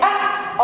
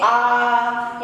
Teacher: छोटा आ को बोलने में कम समय लगा और बड़ा आ को बोलने में अधिक समय लगा। इसलिए कम समय वाले को हृष्ट स्वर कहते हैं और ज्यादा समय लगने वाले स्वर को दीर्घ स्वर कहते हैं।